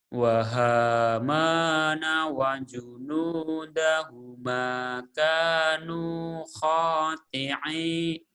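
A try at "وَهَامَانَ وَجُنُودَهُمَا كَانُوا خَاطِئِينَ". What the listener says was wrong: bukan tanu, kanu atuh.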